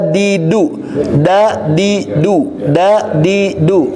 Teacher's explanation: keluar hurufnya itu jangan dibarengi dengan aliran nafas Pak enggak boleh ada udara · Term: huruf Dal